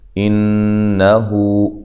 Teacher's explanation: نون مشدد پہ غنہ ضروری ہے، حمزہ کو تحقیق سے پڑھنا ہے۔ ہو واو مدہ کے قائم مقام ہے، اس کو ایک الف کی مقدار کے برابر لمبا کیا جائے گا۔